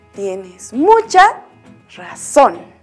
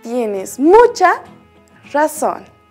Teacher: Mucha, a pesar de no tener tilde, también tiene una acentuación alta